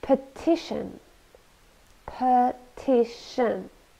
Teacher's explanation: petition petition three syllables and we stress the second one